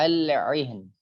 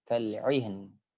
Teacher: terdapat huruf ain yang menghadapi huruf ha yang makhraj keduanya berdekatan, maka jelaskanlah bunyi keduanya. Jadi ain dengan ha biasanya ketika berdekatan, terkadang ainnya yang lemah pun terkadang ha-nya yang lemah.